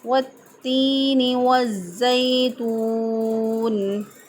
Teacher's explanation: وقف سے پہلے جب واؤ مدہ موجود ہو تو اس کو میکسیمم 3 الف کے برابر لمبا کر کے پڑھ سکتے ہیں